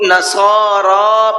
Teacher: نصارى صاد کو پر کر کے بھی پڑھنا ہے اور ساتھ ساتھ کھینچ کر کے بھی پڑھنا ہے، اور را کو بھی کھینچ کر کے پڑھنا ہے۔